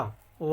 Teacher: प्रश्न नंबर 111, दंतोष्ठ ध्वनि है। तो वाह जो है वो दंतोष्ठ ध्वनि है